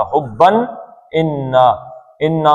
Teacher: یہ اظہار کرنا ہے یہاں پہ اس تنوین کے نون کا ، حبن انا، انا میں بھی شد ہے نون پہ تو